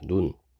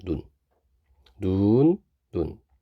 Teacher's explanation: 하늘에서 내리는 눈은 좀 길게 발음해요 눈 그리고 사람 눈은 짧게 발음합니다 눈 눈 눈 그런데 이게